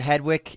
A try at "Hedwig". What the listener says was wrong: You said Hedwig. did a hard K.